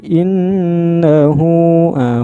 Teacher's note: Ingat ya, mad itu artinya panjang ya, mad silah qasirah panjang, tapi nggak begitu panjang amat ini, maksudnya hanya 2 harokat saja